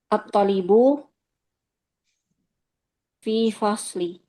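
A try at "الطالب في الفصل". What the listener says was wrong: Panjang toknya, Om. At-talib.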